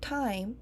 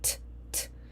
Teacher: And the voicing onset would be when we start saying I in time. So, the time lapse between the T and the I in time is noted as the VOT or the voice onset time